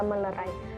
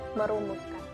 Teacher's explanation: Proses hilangnya fonem n atau nasal pada morfem men dan pen terjadi akibat pertemuan morfem men dan pen dengan bentuk dasar yang diawali dengan fonem L, R, Y, W, dan nasal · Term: hilangnya atau pelepasan fonem